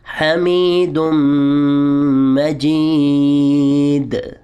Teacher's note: آخر میں حروف قلقلہ میں سے دال آ رہا ہے تو آواز ڈبل ہوگی